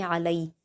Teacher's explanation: لام پر یا لین ہے تو ہم اس کو جلد پڑھیں گے